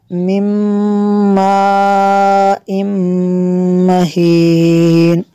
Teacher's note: نون ساکن کے بعد میم حروف ارمالون میں سے ہے، یہاں پہ ادغام ہوگا اس لیے یہاں پہ بھی غنہ کریں گے، اور اس کے اوپر جو مد ہے مد متصل ہے کیونکہ ہمزہ اسی کلمے میں ہے۔